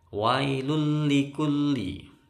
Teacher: tanwin bertemu lam gak boleh dengung karena ini idgham bilagunnah